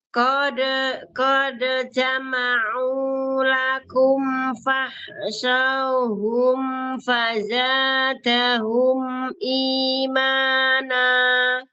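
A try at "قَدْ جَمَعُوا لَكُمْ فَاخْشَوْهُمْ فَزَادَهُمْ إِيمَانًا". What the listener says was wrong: Harfulin bacanya u, bukan o.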